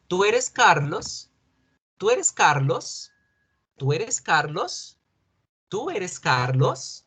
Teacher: utilizo los símbolos de pregunta y subo la voz cuando digo la última palabra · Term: subimos la voz